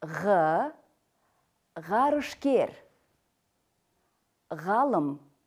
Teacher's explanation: г согласный звонкий заднеязычный произносится твёрдо